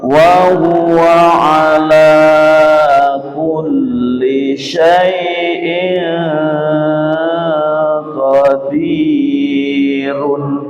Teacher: Kasrot tanwin bertemu dengan qaf, dibaca dengung dengan lama. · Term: ikhfa